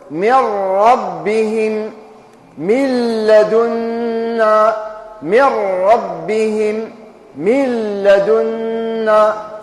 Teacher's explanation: يا أخي قلنا النون تدخل في الراء فتذهب به بالغنة تاعها، نقولوا من ربهم من لدنا، من ربهم من لدنا، فالنون تدخل كلها داخل اللام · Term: الإدغام بغير غنة